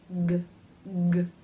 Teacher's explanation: K is unvoiced, k, meaning only air passes through your mouth. And G is voiced, g, g, meaning you're making a sound with your vocal cords